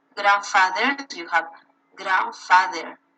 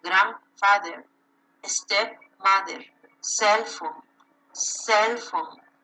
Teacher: so the stress is in the first syllable